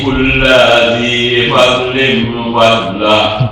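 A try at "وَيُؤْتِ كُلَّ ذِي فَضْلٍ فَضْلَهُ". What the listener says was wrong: Kulla di sini pendek ya. Wa yu'ti kulla dhi kulla dhi fadlin fadlah.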